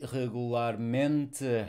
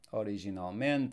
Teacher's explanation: we have the suffix mint and the stress is the default next to last syllable